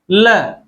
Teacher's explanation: पार्श्विक व्यंजन मतलब जब उच्चारण में हवा जीभ के साइड से निकल जाए, जीभ के बराबर से निकल जाए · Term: पाशविक व्यंजन